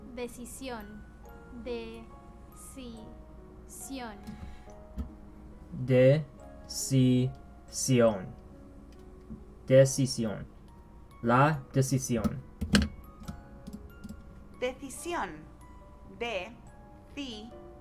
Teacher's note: The lisp is on the CI, the middle section.